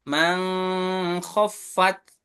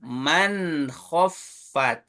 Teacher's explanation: karena huruf izhar, nunnya harus jelas